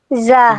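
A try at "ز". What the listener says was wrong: যা না, ঝা। একটু প্রেসার দিয়ে, যা না, জোরে ধাক্কা দিয়ে, ঝা,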